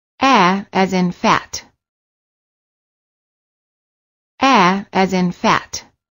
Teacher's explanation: the lips are open not rounded and the tongue is in the lowest position of all the front vowels the tongue is flat on the floor of the mouth the